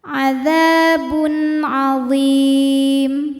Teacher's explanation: tanwin kita bunyikan dengan n yang jelas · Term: izhar halqi